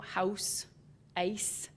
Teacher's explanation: raised ow and I before voiceless consonants